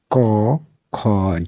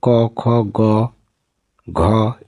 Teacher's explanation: জিভের পেছনের অংশ উঁচু হয়ে আলজিভের মূলের কাছাকাছি নরম তালু স্পর্শ করে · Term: জিহ্বামূলীয় ধ্বনি